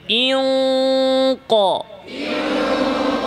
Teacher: উপরে তালুর সাথে পুরোপুরি লেগে আছে [প্রশংসা] ইনক ইন ক ইনক মাখরাজ জিহবার গোড়া উপরের তালুর সাথে পুরোপুরি লেগে যাবে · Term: কফের গুন্না